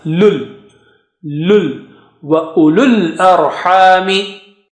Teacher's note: You don't say u and lul, because after lam, with dhamma, there are no signs on waw and alif. You just jump from lu to the lam sakina.